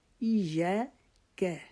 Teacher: یا کو ایک الف کے جتنا لمبا کرنا ہے